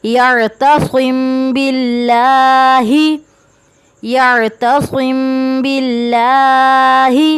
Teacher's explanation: اب یعتصم باللہ، میم ساکین ہے، میم ساکین کے بعد با ہے تو ہم نے نمبر 2 میں کیا پڑھا تھا کہ میم ساکین کے بعد میم یا با آ جائے تو وہاں پر بھی قاعدے کے مطابق غنہ ہوگا. اب میم ساکین ہے، میم ساکین کے بعد با ہے تو یہاں پہ بھی غنہ کریں گے.